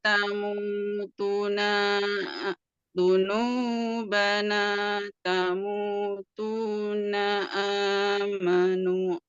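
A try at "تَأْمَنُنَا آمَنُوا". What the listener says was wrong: Masih belum pas panjangnya. Naknya pendek.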